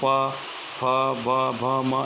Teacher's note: बंने होठ बीडीने ज तेनो उच्चार शक्य होवाथी तेने ओष्ठ स्थानीनी ओळख अपाय छे